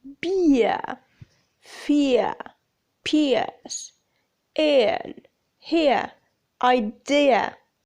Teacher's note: there is a glide that begins in the position for short /ɪ/ moving down and back towards schwa /ə/ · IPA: /ɪə/